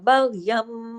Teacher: دو زبر، تنوین کے بعد با آ گیا، نون کی آواز نہیں آئے گی، یہاں میم کی آواز آئے گی، اقلاب کا قاعدہ لگ گیا. بغیم، غنہ بھی ہو رہا ہے لیکن بڑے لیول کا نہیں، چھوٹے لیول کا